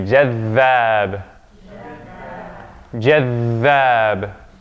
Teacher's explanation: It's not jadhab, not just jadhab, but we stay. The dhal gets doubled. We stay on that one.